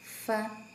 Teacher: bibir bawah bertemu dengan gigi seri atas